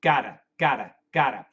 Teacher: the flap T is very close not exactly but really really close to a d pronunciation